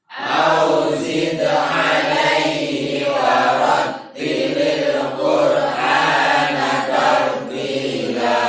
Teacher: perhatikan au bacanya betul-betul u ya, bukan o.